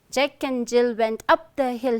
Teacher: stressed, unstressed, stressed, unstressed, stressed, unstressed, stressed